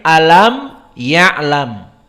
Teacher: Maka makhraj mim intibak baina syafatain alam ya'lam